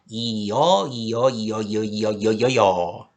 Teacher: 여라는 모음은요. 사실 이와 어라는 모음이 합쳐져서 나는 소리예요